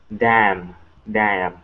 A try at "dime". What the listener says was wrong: Okay, almost. You're saying dam. Okay, instead of ah, it's ai, dai, dime.